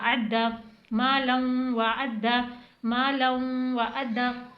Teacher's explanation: दो ज़बर की तनवीन आ रही है, इसलिए यहाँ पर गुन्ने के साथ पढ़ना है आपको। मालम वाव ज़बर वा मालम व आइन को हलक से अदा करना है।